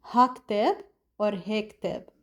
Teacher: For example, if you're talking about هيدا, certain people drop the last part of هيدا, so it becomes he alone, he. So we say he كتاب or ha, depending on the region we're talking about.